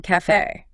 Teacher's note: It signals a closed E sound, a crisp and bright E.